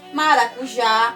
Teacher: a última sílaba mais forte é o a acentuada